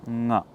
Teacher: The final consonant in any row of consonants is a nasal sound called as an anunasika vyanjana, and this is uttered through the nose, but it comes from the same place as the pit of the throat